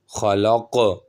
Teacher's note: قاف کو بھی موٹا کریں گے اور قلقلہ بھی کریں گے۔